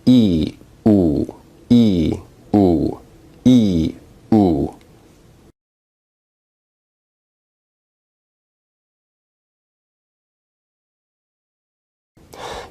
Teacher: e is a high vowel, but it's also a front vowel